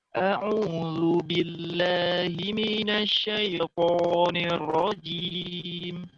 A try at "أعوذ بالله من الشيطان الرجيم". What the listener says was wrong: Ya, kurang tebel dikit. Ro-nya. Nirrojim. Nirro.